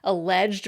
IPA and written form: əlɛʤəd (alleged)